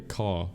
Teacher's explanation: Australians tend to not pronounce their R's at the end of words similarly to the British. For example, instead of saying car, they would say caw.